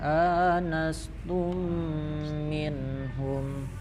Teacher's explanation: tum mim bertemu mim, jadi itu hukumnya idgham mimi, jadi didengungkan